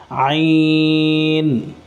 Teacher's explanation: عین کو کھینچ کے پڑھنا ہے اور گلے کے درمیان سے عین کی آواز آئے گی